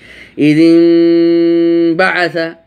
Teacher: নুন সাকিনের পরে বা এসেছে, সেজন্য নুন সাকিনের উচ্চারণটিকে মিম দিয়ে পরিবর্তন করে আমরা পড়তেছি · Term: ইকলাব